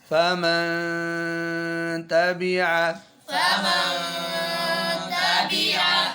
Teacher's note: آواز جاتی ہے تو اخفاء میں یہ کہہ دیتے ہیں کہ اخفاء کرنا ہے ناک میں آواز لے جاؤ · اصل اخفاء کیا ہے اظہار اور ادغام کی درمیانی حالت یعنی زبان کا کنارہ نون کے مخرج میں تھوڑا اور ساتھ غنہ خیشوم والا وہ لمبا